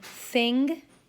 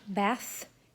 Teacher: The th in thing and the end of bath is a voiceless fricative made with the tongue between the teeth